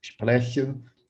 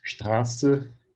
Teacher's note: quando tem um encontro consonantal, o R com uma consoante antes, às vezes costuma vibrar só uma vez, mas é uma variação desse outro R, então, que eu falei que vibra bastante ali atrás.